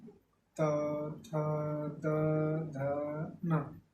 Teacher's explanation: तो जब हम ता वर्ग को पढ़ते हैं तो हमारी जिह्वा हमारे दंत से टकराती है, हमारे दंत को स्पर्श करती है। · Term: दंत्य